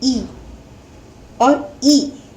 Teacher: इन स्वरों को बोलने में तालु, यानी जो हमारी जीभ है वो तालु को स्पर्श करती है। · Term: तालव्य